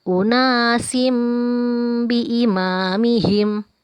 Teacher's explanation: Ada tanwin bertemu huruf ba, maka berubah menjadi huruf mim. Dan kita panjangkan.